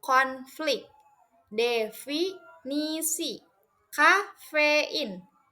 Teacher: hembuskan udara keluar melalui celah sempit antara bibir bawah dan gigi atas. Jangan gunakan pita suara, tidak ada getaran di leher sehingga bunyinya seperti hembusan angin halus. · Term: bunyi F